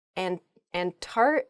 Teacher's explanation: when you're saying this word quickly you might leave out that first C in the Antarctic